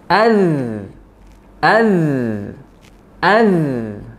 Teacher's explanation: jadi huruf zalnya masih ada sisa aliran suara, tapi nafasnya tertahan. Tidak mungkin kalau nafasnya mengalir.